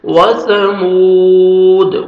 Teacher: 1 second میم کو کھینچنا ہے، واو مد ہے